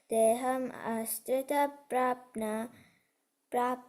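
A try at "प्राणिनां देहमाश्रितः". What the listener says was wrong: You missed the word. You missed the word. Praninam deham ashritaha.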